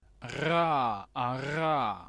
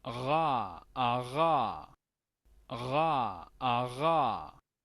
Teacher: Si bien es cierto, se escucha fuerte, pero termina como debilitándose al final. Es porque viene de la parte uvular. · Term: sonido fricativo uvular